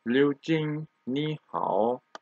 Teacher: two third tone come together, and first third tone becomes the second tone.